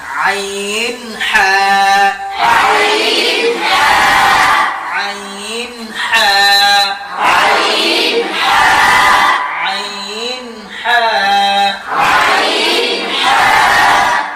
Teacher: হলকের শুরু হইতে হামজা হা, হামজা হা। 2 নম্বর মাখরাজ হলকের মধ্যখান হইতে গলাটি চাপাইয়া মধ্যখান থেকে আইন হা, আইন হা, আইন হা, আইন হা, আইন হা, আইন হা।